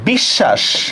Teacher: খেয়াল করেন তো বিশ্বাস শব্দের মধ্যে আমরা শটাকে দুইবার উচ্চারণ করি কিনা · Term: দ্বিত্ব উচ্চারণ